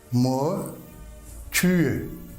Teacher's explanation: When it's final letter in Danish words, especially after vowel, then it's pronounced like ö